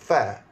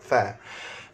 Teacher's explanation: Fa, gigi atas, gigi kacip atas bersentuhan dengan bibir bawah. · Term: huruf fa